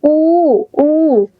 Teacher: এরপর দেখ রস উ দীর্ঘ উটাতেই আমার ঠোঁটটা একদম গোল হয়ে যায় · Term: অষ্ঠধনি